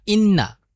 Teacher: এখানে গুন্না হবে কেন নুনের উপরে তাজদিদ আছে